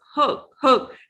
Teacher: your mouth is relaxed your lips is relaxed and round rounded